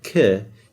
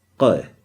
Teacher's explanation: So you say the k, notice where your tongue, the area of your tongue that's touching the roof of your mouth, the q is going deeper. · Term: q sound